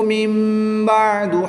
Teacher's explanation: نون ساکن کے بعد حرف با ہے تو یہاں پر اقلاب ہوگا، یعنی نون ساکن کو میم سے بدل کر غنہ زمانی کر کے پڑھیں گے